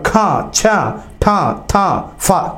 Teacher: ఖ, ఛ, ఠ, థ, ఫ ఇవి మహాప్రాణాలు అయినప్పటికీ కూడా ఇవి కూడా శ్వాసాలే